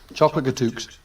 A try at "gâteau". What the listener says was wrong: I mean, I don't mean to make you look like an idiot or anything, but I think you'll find it's gâteau. Yeah. Yeah, the X is silent. Gâteau. That's right.